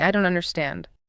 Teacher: Your pitch should drop. Your speech should slow down. It is a gentle soft sound.